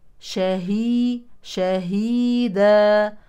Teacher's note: التنوين يليه شين يعني اخفاء حقيقي على كل شيء شهيدا طبعا نهتم بتوضيح الهاء لانها احيانا تضيع ان جاورت الشين فننتبه شاهي شهيدا وقفا على تنوين النصب مد عوض ولكنه مرسوم